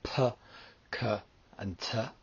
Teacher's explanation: So the smooth mutes are p, k, and t. They're not pronounced with so much force or roughness.